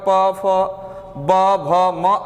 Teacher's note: प वर्ग का उच्चारण स्थान ओष्ठ है